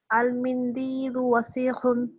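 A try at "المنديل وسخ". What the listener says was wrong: সিনে টান নাই আবার বলেন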